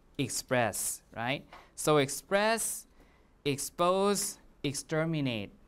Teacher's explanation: also a voiceless right so this matches the voicing matches right so you can say that uh the s is a result of assimilation in terms of voicing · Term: voicing assimilation